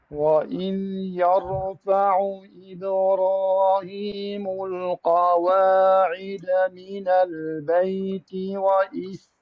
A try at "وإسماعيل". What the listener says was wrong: سين سمعني سين. وإسماعيل سين ضعيفة. احاول انه تنطيها راحتها ولا تطبق بين الاسنان بحيث انه يموت عندك حرف السين. لا تطبق الاسنان، الفك العلوي مع الفك السفلي لا تطبق، خلي مجال ما ينطبق. اي لا تطبق، زين كمل.